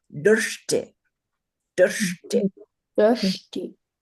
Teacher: This has a vocalic R, which is the vowel, and then it has two cerebral letters. So we're going to put our tongues on the top of our roof of our mouth, right up into the brain, and say, Drshti, drshti.